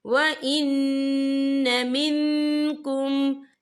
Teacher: यहाँ नून मुशद्दद है, तो यहाँ पर गुन्ना होगा